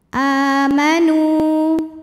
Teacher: Cara membacanya dipanjangkan nunnya 2 harokat. · mad badal sebab ada Hamzah yang dipanjangkan cara membacanya panjang dua harakat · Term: mad tabi'i zahiri